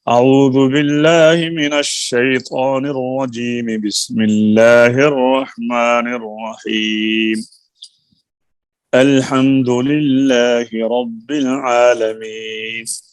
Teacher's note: تعوذ اور بسملہ ایک سانس میں، اور آگے سورت علیحدہ سانس میں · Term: وصل اول فصل ثانی